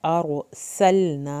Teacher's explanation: सीन को सीटी की आवाज़ के साथ पढ़ना है, लाम को नहीं हिलाना।